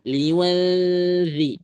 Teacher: lidahnya langsung ke ujung dua gigi seri aja nggak masalah. Liwadzi langsung nempel di situ.